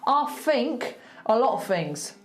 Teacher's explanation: when there is a TH in the word, I'm going to make it an F